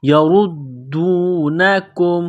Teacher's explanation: دال کے اوپر تشدید ہے، دال کو دبانا ہے، سختی کرنی ہے